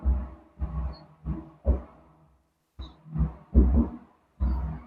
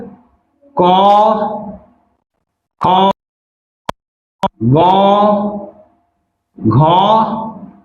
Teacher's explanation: तो आप से पहला वर्ग है क वर्ग, जिसके अंतर्गत क, ख, ग, घ और अंघों को रखा गया है और इन 5 वर्णों का उच्चारण कंठ से होता है। तो क वर्ग का उच्चारण कंठ